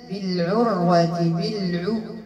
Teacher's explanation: العين ضم الشفتين عند النطق بالعين، العين خاصها تكون مرققة لأنها تجاورت مع الراء مفخمة، فما تجرحكمش هذيك الراء وتخدموا لي العين، العين راه مرققة.